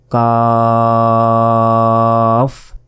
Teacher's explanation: জিহ্বার গোড়া থেকে একটু আগে বাড়িয়ে তার বরাবর উপরে তালুর সঙ্গে লাগিয়ে কাফ অক্ষরটি উচ্চারণ হয়